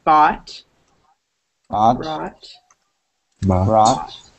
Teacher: The whole O-U-G-H is replaced with ah.